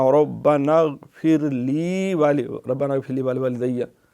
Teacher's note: غائن پہ قلقلہ نہیں کرنا